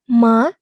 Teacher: nada kedua itu nadanya naik, teman-teman. Dari nada ketiga ke nada kelima.